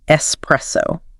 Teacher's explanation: S press. The heavy heartbeat stress goes right in the middle on the press.